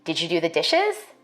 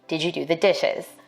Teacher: yes no question with a level tone or a falling tone for white speakers we expect a rising tone in questions like these · African-American speakers may be more likely to ask a yes no question with a level tone or a falling tone